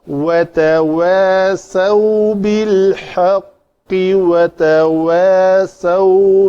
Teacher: تا کے بعد فوراً شفتین گول ہوں باہر ایسے نکلیں